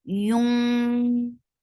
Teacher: As soon you will touch noon, with ikhfa, your lips should be in a straight position, and you are getting ready for the letter fa. You are not pronouncing noon, and you are keeping the sound in your nose.